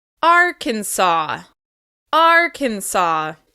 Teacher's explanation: For this state, we stress the first syllable.